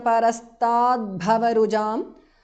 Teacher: The t in the end of stat changes to d because of Sandhi.